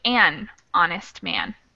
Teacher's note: just change a to an honest man and that's just because even though the word is starting with an h the first actual pronunciation syllable is a vowel